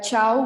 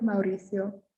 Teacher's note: mauricio when we have an a o or a u um even though usually the vowels are pronounced separately it's just common to say them together and make an ow sound